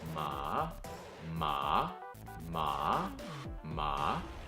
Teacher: the third tone starts even lower than the second but it follows a check mark shape